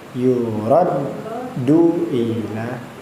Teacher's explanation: Ditahan dulu dalnya karena tasdid.